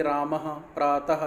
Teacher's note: जब बोलते हैं इसको तो पीछे ह की आवाज़ आती है। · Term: विसर्ग